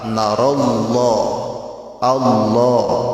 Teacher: Narallah asalnya nara Allah, idgham kan jadi narallah pakai alif lam. Lafaz Allah tidak boleh dibaca narillah, karena ini dihukumi tafkhim. Tafkhim itu tebal.